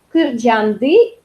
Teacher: тут у нас опять звонкий вариант, потому что здесь была «с» глухая, а у нас «н» звонкая.